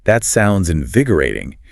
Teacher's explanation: So if you hear the host say something like that sounds invigorating, you pause or use the lag to really focus on where the stress falls in vi oring. See how the emphasis hits that third syllable?